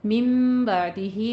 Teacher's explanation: मिम बादिही में इक़लाब है। नून साकिन के बाद बा आ रहा है, इसको मीम में बदल कर पढ़ेंगे। बादिही में भी मद सिला सुग़रा है।